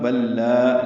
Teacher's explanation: بل لا میں لام ساکن ہے اور پھر لام آیا تو ادغام میں مثلین ہوا. بل لا الف مدہ ہے، باریک ہی پڑھیں گے لام کو